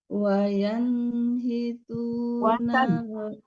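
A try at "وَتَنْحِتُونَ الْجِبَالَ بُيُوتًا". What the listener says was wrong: Kita Ibu, bukan yan, watan.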